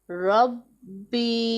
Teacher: یا ساکن ہے، اس سے پہلے زیر ہے، اسے ایک الف کے جتنا لمبا کر کے پڑھنا ہے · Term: یا مدہ